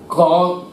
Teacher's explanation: ঠোট বন্ধ করছি না কিন্তু গলা বন্ধ করছে